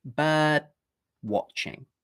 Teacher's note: But what we can do is move the d to the end of the first syllable instead. Now, when a d comes at the end of a syllable, like in the word bird, we don't actually need to go d. We can just put our tongue into the d position.